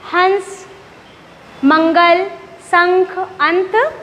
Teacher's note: जब हम अनुस्वार का उच्चारण करते हैं तो हवा कहाँ से निकलती है? नासिका अर्थात हमारे नाक से।